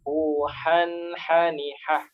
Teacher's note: Sama huruf haknya tidak boleh ditahan karena izhar jelas. Huhan hani hah, dialirkan saja.